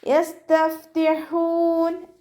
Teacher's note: ഫാഇനും half സുക്കൂന് കൊടുക്കുക, ലൈറ്റാക്കിയിട്ട് ഉച്ചരിക്കുക കേട്ടോ. ഹ മഖ്റജ് വരുന്നത് വസത്തുൽ ഹൽക്കാണ്, തൊണ്ടയുടെ മധ്യഭാഗം. സൗണ്ടിനെ വ്യക്തമാക്കി ഉച്ചരിക്കുക.